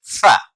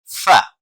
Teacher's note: آپ دیکھ رہے ہیں تصویر کے اندر کہ اوپر والے دانت نیچے والے ہونٹ کے ساتھ ٹچ ہوں تو ادا ہوتا ہے فا۔ نیچے والا ہونٹ جب اوپر والے دانتوں کے ساتھ ٹچ ہوتا ہے تو ادا ہوتا ہے فا